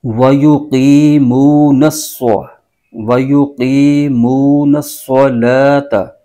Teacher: है सद मुसद हर्फ उसको नून के साथ मिलाना है और सद को सीन की आवाज के साथ नहीं पढ़ना बल्कि सद पुर करके पढ़ना है · مشدد حرف ہے اس کو نون کے ساتھ ملانا ہے، اور صاد کو سین کی آواز کے ساتھ نہیں پڑھنا بلکہ صاد پر کر کے پڑھنا ہے